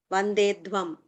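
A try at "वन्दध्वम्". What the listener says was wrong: Vandadvam, not Vandedvam. Vandadvam.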